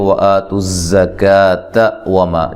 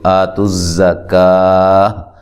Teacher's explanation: جب ملا کے پڑھیں گے تو وَآتُوا الزَّکَاةَ وَمَا، جب وقف کریں گے تو آتُوا الزَّکَاةَ، ٹھیک ہے، یہ تا پھر ختم ہو جائے گی، ہائے ساکنہ بن جائے گی